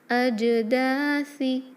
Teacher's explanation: سا میں نو whistling sound, سیٹی کی آواز نہیں آئے گی